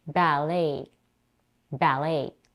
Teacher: ballet is a two syllable word with a primary stress on the second syllable like in French it's very important to pronounce the first vowel